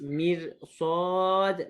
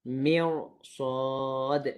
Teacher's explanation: Ayat ke-14 mirsad juga dibaca dengan tebal. Ni pun dikecualikan kerana selepasnya ada huruf sad ataupun huruf isti'la.